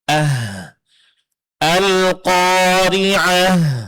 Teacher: dalam pengucapannya mesti keluar angin atau napas atau suara seperti bisikan. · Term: huruf hamas